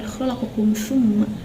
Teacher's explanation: Yang ke-10 lafad khalaqakum thumma, di situ di kum thumma, itu hukum tajwidnya idhar syafawi, alasannya mim sakinah menghadapi huruf fa. Cara membaca menyuarakan mim sakinah dengan jelas bibir serta mulut tertutup